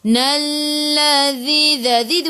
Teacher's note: hujung lidah keluar pada gigi depan